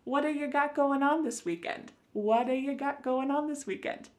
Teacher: This is really typical of American English where a T that's surrounded by vowel sounds is going to change to a D. It's called a flapped T and it just kind of uh rolls off your tongue in a smooth way.